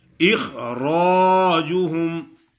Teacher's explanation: خا موٹا ہے، را بھی موٹا ادا ہوگا